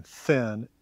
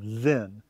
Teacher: thin, your vocal cords aren't vibrating, then your vocal cords are